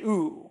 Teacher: Your tongue is way far back in your mouth, and there's a lot of space to the front. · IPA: [u]